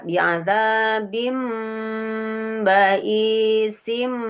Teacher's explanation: Menukar suara tanwin an menjadi suara mim. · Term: iklab